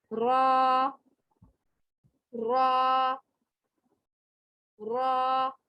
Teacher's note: ये देखें, यहाँ से इसकी साउंड निकल रही है और पीछे से ये ऊपर उठेगा। जब मोटा हर्फ पढ़ा जाता है तो ये पीछे से जुबान की जो जड़ है वो ऊपर उठ जाती है · मुकाबिल के तालु से लगती है। और पीछे से जुबान की जो जड़ है वो ऊपर की तरफ उठ जाती है और आगे से ये मुकाबिल के तालु की तरफ लगती है। तो ये रा का मखरज अदा होता है।